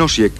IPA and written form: ˈɔsjɛk (Osijek)